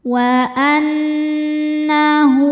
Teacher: Wa annahu hu hukumnya mad silah qasirah sebab ada ha damir diapit dua huruf hidup dan setelahnya ini bukan hamzah bukan a i atau u. Maka cara bacanya h-nya panjang dua harakat.